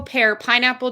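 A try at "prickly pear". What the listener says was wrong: prickly pear, by the way. They're not drinking pickle. pear. It sounded like pickle.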